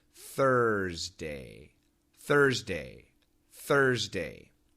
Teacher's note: the tongue touch anywhere in the mouth third Thursday third thday the S is actually a z sound and it's vibrated and then you touch with the D